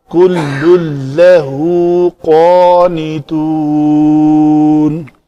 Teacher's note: بل لہو ما فی السماوات والارض کل لہو قانتون، یہ تنوین کے بعد لام ہے تو اس تنوین کا مکمل ادغام ہوگا اس لام کے اندر، تو کل جو نون ہے وہ نہیں پڑھی جائے گی